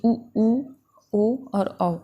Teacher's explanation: जब उच्चारण करते हैं तो हमारा ओठ जो है वो एकदम वृत्ताकार हो जाता है। तो ये 4 स्वर हमारे वृत्ताकार या वर्तालुकार हैं।